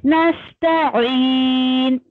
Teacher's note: नस्तईन, देखिए नून साकिन है, नून की आवाज आपकी हल्की सी नाक नोजल पार्ट उसमें आएगा हल्का सा